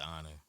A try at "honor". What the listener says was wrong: Honor. You gotta roll the R on it.